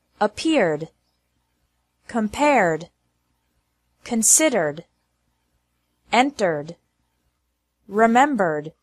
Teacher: e d is pronounced like d with no no extra syllable after verbs ending with an R sound